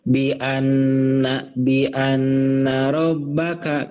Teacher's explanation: Bi anna guna kalau nun bertasydid itu contoh guna. Guna itu ditahan kemudian didengungkan.